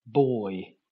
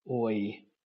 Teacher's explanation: And boy, that's the oi vowel. Okay, starting close to the O vowel and moving up to the E vowel